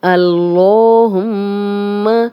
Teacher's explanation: اللہم، یہاں پہ اللہ کا لام موٹا پڑھیں گے، 2 حرکات لمبا کریں گے، کھڑا زبر ہے اور میم پہ شد ہے، غنہ کریں گے